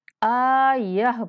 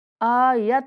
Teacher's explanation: گول تا پر جب بھی وقف کرتے ہیں تو اس کو ہا کی آواز میں بدل دیتے ہیں